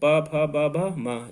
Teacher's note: ये ओठ से बोले जाते हैं, यानी इनको बोलने में ओठ आपस में मिलेंगी, तो इसको ओठ से कहा जाता है।